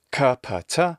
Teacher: when we have an initial k sound we have to add aspiration to it and this is true of other unvoiced stops or occlusives kappa